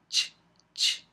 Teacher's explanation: fricativa pero en un solo fono en un solo sonido Entonces primero hay una oclusión y luego hay fricción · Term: africadas